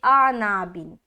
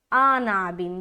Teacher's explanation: आनाबिन पढ़ रहे तो आपका आइन हज़फ हो गया, आइन अदा नहीं हुआ, जबकि आइन भी अदा करना, और आइन का मखरज क्या है, वस्ते हलक, तो हलक से निकालेंगे आइन।